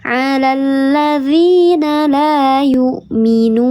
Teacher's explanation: Huruf ya yang sebelumnya harakatnya kasrah. Ada alif sebelumnya harakatnya fathah. Dibacanya panjang dua harakat. Namanya mad th'i. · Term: mad thabi'i